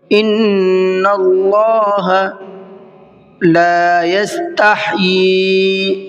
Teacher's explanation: لا کو کھینچ کر کے پڑھیں گے، اس لیے کہ یہاں پر الف مدہ کا قاعدہ ہے۔ اکثر غلطی یہ ہو جاتی ہے لوگوں سے کہ اس کو لا یستحیی پڑھتے ہیں، لا یستحیی نہیں پڑھتے، تو یہ غلط ہے۔